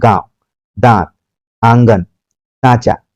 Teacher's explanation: तो आपके दिमाग में रखना चाहिए कि ये व्यंजन है और स्वर के बाद आता है और इसकी जो ध्वनि है नाक से निकलती है और अनुनासिक जो है इसकी जो ध्वनि है नाक और मुंह दोनों से निकलती है